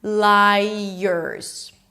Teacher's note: You add a Y sound, a schwa, and an R. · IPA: ˈlaɪərz